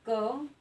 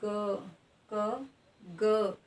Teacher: ठीक है, जब आप क का उच्चारण कर रहे हैं तो ये वर्ण आपका एकदम से उच्चारित हो रहा है, अर्थात इसमें कंपन नहीं हो रहा है। लेकिन जब हम ग वर्ण का उच्चारण करें तो हल्का सा हमें कंपन महसूस हो रहा है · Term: सघोष वर्ण